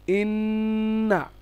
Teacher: নাকের মধ্যে আওয়াজ নিয়ে যাওয়ার ব্যাপারটা থাকে